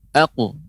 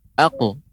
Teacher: huruf qaf ketika qalqalah dia agak lebih tebal karena termasuk huruf-huruf isti'la